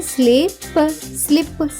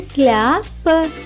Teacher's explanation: ఎస్ఎల్ యొక్క శబ్దం సాలా కాకుండా స్లా అవుతుంది. కాబట్టి ఎస్ఎల్ఐ యొక్క శబ్దం అవుతుంది స్లీ.